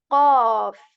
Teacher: Okay, so the K of English is very light, but the qaf. This sound is produced not from the mouth area, but this comes from the throat as well.